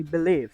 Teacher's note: suku kata terakhir ini menerima penekanan utama dengan durasi yang lebih panjang intensitas yang lebih tinggi atau nada yang lebih tinggi dibandingkan suku kata yang lainnya sama seperti yang sudah dijelaskan sebelumnya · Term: word ending stress